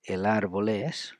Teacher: We link L and A, as you see, and L and E.